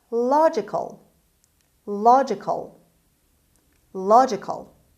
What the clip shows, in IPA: ˈlɑːdʒɪkəl